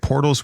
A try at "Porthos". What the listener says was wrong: And it's pronounced Porthos. Porthos, not Portos.